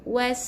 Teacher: Masukkan huruf waw ni dalam huruf sin yang tanda mati. Jadi was bukan was tebal, bukan huruf sad nipiskan